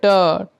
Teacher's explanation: मुर्धा में अपना जीहा टच हो रहा है